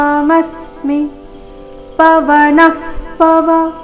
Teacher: ಪವನ ನಂತರ ಬಂದಿರೋ ವಿಸರ್ಗದ ಉಚ್ಚಾರಣೆ ಅರ್ಧ ಫ ರೀತಿ.